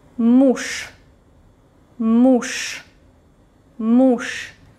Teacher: you can hear voiceless consonant sha because it is located at the end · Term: voiceless consonant Ш